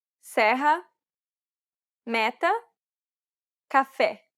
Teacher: This vowel sound is identical to the E in set. It's known as the open E sound in Portuguese.